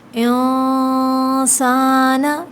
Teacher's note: ان الانسان لفی خسر، ان نون مشدد جہاں بھی آئے گا وہاں ہم غنہ کریں گے۔ انسان چھپا کے غنہ ہوگا، مطلب اخفا